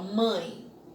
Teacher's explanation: O E passa a ser uma semivogal porque ela perde a força em relação ao A